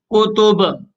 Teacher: تو با کو ساکن کر لیں گے اور اس کے ساتھ ساتھ با میں قلقلہ بھی کریں گے.